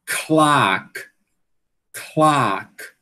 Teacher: Você tem que aspirar, né? E essa aspiração, ele meio que passa por dentro do l, certo?